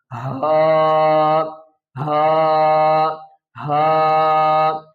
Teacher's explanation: اس ہا کو پڑھنے کا یہ طریقہ ہے کہ گلے کے اینڈ سے اور آواز کو بھاری کر کے نکالنا ہے